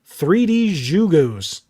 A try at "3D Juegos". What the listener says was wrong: I think that's 3D Juegos, because in Spanish, J is pronounced with an H.